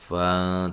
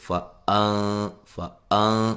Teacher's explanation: تحقیق سے یہ ہے کہ حمزہ کو واضح کر کے پڑھنا ہے